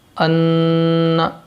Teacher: ناک میں آواز جائے گی اور ایک الف کے برابر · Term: غنہ